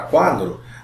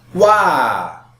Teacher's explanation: a palavra quadro nós temos aqui um ditongo né só que essa vogal ela sai mais fraca na pronúncia e consequentemente a vogal a ela sai mais forte